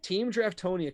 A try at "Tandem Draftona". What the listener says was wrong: You know, I like to give a hard time for mispronouncing things. It's Tandem Draftona. You've been calling them Team Draftona right. all season.